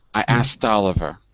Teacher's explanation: So most people drop the K.